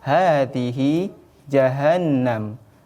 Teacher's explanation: Pada kalimat jahannam itu harus ditekan, harus ditahan, harus dilamakan, tidak boleh langsung. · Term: didengungkan